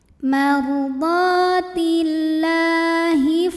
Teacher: cara membacanya dipanjangkan lamnya dua harakat saja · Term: lam Thobi'i muqaddar